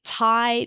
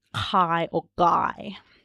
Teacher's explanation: That's very, very common, and that is not a sign necessarily of hearing issues, but the reverse, using a k or a g sound instead of a front sound like a t or a d or an n, is unusual and might be a sign that there are hearing issues. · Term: backing